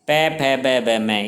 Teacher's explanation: इनके उच्चारण में हमारे होठ आपस में मिलते हैं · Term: ओष्ठ